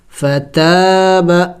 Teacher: تا کو کھینچیں گے اس لیے کہ الف مدہ ہے